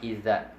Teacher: Ang zal ay nasa dulo ng dila at dulo ng ating mga ngipin sa unahan, yung nasa taas. So yung dulo ng mga ngipin sa taas, itong nasa harap, at yung dulo ng ating mga dila, yan yung magiging makhraj ng zal.